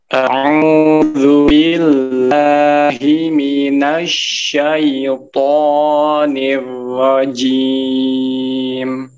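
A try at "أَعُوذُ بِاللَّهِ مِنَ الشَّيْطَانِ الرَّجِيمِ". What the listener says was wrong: Syaitonnya masih terlalu panjang. Cukup 2 harokat aja. Syaitonir rajim. Jadi jangan sampai terlalu panjang untuk belah harokatnya ya.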